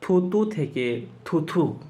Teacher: অল্পপ্রাণ বর্ণ যখন মহাপ্রাণ বর্ণের মত উচ্চারিত হয়